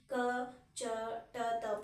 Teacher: ಸ್ವಲ್ಪ ಸಮಯ ಅಥವಾ ಅಲ್ಪ ಉಸಿರಿನ ಸಹಾಯದಿಂದ ಉಚ್ಚರಿಸಲ್ಪಡುವ ಅಕ್ಷರಗಳನ್ನು ಏನಂತ ಕರಿತೀವಿ? ಅಲ್ಪ ಪ್ರಾಣ. ಕಡಿಮೆ ಉಸಿರಿನ ಸಹಾಯ, ಅಲ್ಪ ಅಂದರೆ ಸ್ವಲ್ಪ ಅಥವಾ ಕಡಿಮೆ ಅಂತ ಕರಿತೀವಿ.